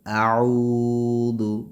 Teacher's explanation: عین حروف حلقیہ میں سے ہے اور اس کو کھینچ کے پڑھیں گے واو مدہ کی وجہ سے ، اعوذ برب، را کو موٹا پڑھیں گے، برب، نون پہ